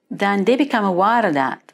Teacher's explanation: did you hear how she pronounced her th sounds this is very distinctive in this area replacing the with a D or a T